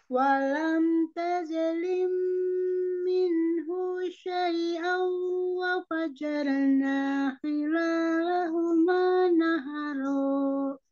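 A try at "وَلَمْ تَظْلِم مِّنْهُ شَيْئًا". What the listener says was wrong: Masih mantul. Tahu. Tahan di mahrodnya. Zo.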